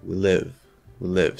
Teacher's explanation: We have live, which is stressed. It's a one syllable stressed content word. Bam, louder, longer, we get that arc. We live. So you basically just attach that W to that word and it sort of becomes part of the same word, okay?